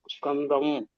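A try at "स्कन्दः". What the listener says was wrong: ಮೂರನೇ ಕೊನೆ ಪದ ಸ್ಕಂದಹ ವಿಸರ್ಗ ಇದೆ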